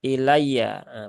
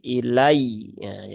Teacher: ini berarti ya sukun yang bertasdid ya maka di sini ya ditunaikan tasdidnya